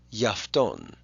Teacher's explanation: instead of pronouncing two alphas, ya afton, usually you'll smush them together into one syllable